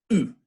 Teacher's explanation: you're forcing the air up through a constricted throat and through that constricted set of rounded lips